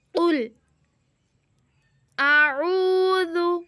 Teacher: قل اعوذ، واو ساکن ہے اور واو سے پیچھے پیش ہے، اس لیے بن گیا واو مدہ، اور واو مدہ کو ہم ایک الف کے برابر لمبا کرتے ہیں۔ اعوذ، زال پہ ہم زبان باہر نکالیں گے کیونکہ زال نرم حروف ہے۔